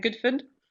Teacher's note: the words good and food will actually rhyme in a Glaswegian accent · there's the Scottish vowel length rule, meaning that some vowels get really short. So they're much shorter.